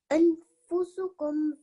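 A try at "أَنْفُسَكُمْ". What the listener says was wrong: Not fusukum, fasakum. There is a fatha. There is a fatha on top of the scene. So anfusakum.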